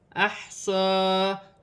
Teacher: صاد پر کھڑی زبر ہے، 1 الف کی مقدار کھینچ کر پڑھا جائے گا